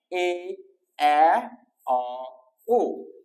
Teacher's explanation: উচ্চারণের সময় আমাদের এই যে জিহ্বা আছে সেটা সামান্য পরিমাণ উপরে ওঠে, সে কারণে সেটাকে বলা হচ্ছে মধ্য স্বরধ্বনি